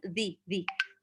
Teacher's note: Ujung lidah bertemu dengan 2 gigi di atas zi.